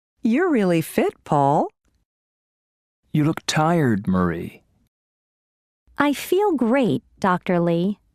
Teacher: notice these statements with direct address there is usually falling intonation and a pause before the name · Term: Intonation with direct address